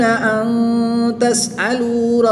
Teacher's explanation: نون ساکن کے بعد حرف اخفا میں سے تا ہے تو یہاں پر اخفا ہوگا، یعنی غنہ کر کے پڑھیں گے